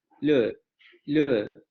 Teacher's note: Si ustedes pronuncian esa palabra o se van al diccionario de Cambridge, en donde pueden escuchar esa pronunciación, se darán cuenta que este segundo fonema suena extremadamente debilitado. Y más bien parece una vocal larga de este fonema.